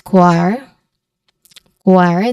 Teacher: So it starts with a consonant blend KW and then ends with a letter R sound. And stressed syllable here is quai.